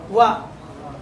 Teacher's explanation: ನಾಲ್ಗೆ ತುದಿ ಹಲ್ಲು ಲ್ಯಾಂಡ್ ಆಗಿರುತ್ತೆ, ತುಟಿ ಓಪನ್ ಆಗುತ್ತೆ.